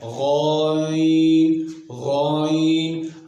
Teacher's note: غائن کے ادا کرتے وقت زبان کی جڑ اوپر کے تالو کی طرف اٹھ جاتی ہے، جس سے یہ پتہ چلتا ہے کہ یہ حرف موٹا ہے۔ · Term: استعلاء